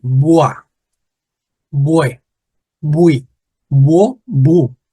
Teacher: in Haitian Creole, they used to forget about the R, and instead of the R, they replaced the R with W.